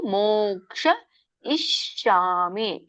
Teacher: ಮೋಕ್ಷ ನೋಡಿ, ಕಕ್ಕೆ ಶ ಒತ್ತಿದೆ. ಮೋಕ್ಷ ಶ ಮೂರ್ಧನಿ ಶ ಹೇಳ್ಬೇಕು.